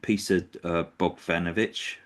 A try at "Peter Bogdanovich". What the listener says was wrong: You got one letter wrong. It was a V, a D. You said a V where it should have been a D, but